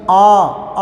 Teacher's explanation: आ बोलते तो पूरा मुख खुलता है, विवृत